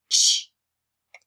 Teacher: Big old puff of air comes out and our lips are fat. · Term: fat puff